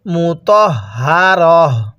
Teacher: ওয়াকফের সময় এই তাটাকে হা বানিয়ে দিতে বলছিলাম, এই জন্য আমরা ওয়াকফ করলে তাটাকে হা বানিয়ে দিব। কিভাবে পড়ব মুতাহহারহ, এরকমভাবে পড়ব।